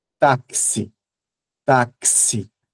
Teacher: Taxi, taxi, né? Tem um som de k, tem um som de s ali, né?